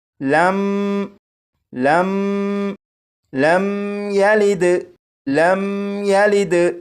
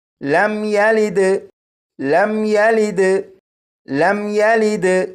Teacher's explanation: یہاں پر دیکھیں، یہ ہے میم ساکن۔ اس میم ساکن پر غنہ نہیں کریں گے